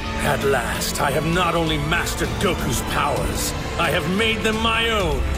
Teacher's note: The hard R is now being pronounced in words like mastered and powers